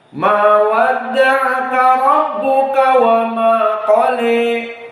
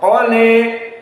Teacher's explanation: Al-Imalah Al-Kubra lebih condong daripada taklil, maka dia 30% saja. Mendekati kepada horizontal, maknanya kepada kasroh.